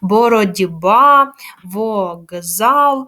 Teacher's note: глухі приголосні звуки перед дзвінкими в нас уподібнюються вони також стають дзвінкими